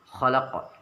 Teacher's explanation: Suaranya agak dipantulkan dengan kuat. Huruf qaf yang mati atau sukun dibaca memantul. Qalqalah itu artinya memantul, sama seperti bola yang dilempar ke bawah lalu dia akan segera memantul.